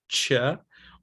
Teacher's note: when t and sh are pronounced so close together that they become a new sound, which is ch, or d and j when they're together and they become j. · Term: affricates